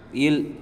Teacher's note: மேல்வாய் நாக்கின் ஓரங்கள் தடித்து தடுவதால் பிறக்கின்ற எழுத்துக்கள்